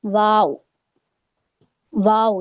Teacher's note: आप जब दोनों होठों को गोल करेंगी तो हमारा वाव अदा हो जाता है। ठीक है? इसमें कोई दांत का किसी तरीके का कोई यूज़ नहीं हो रहा है।